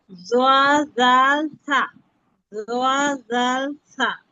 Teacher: 13 নম্বর মাখরাজ জিহ্বার আগা সামনের উপরে দুই দাঁতের আগার সঙ্গে লাগায়া